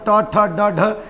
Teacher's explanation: ये जो हमारे हैं ट वर्ग वाले ये मुर्धा से बोले जाते हैं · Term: मुर्धन्य